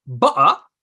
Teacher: va a decir butter, con lo que llaman el glottal stop, la pausa glotal